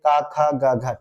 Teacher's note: कंठ के अंतर्गत आता है का वर्ग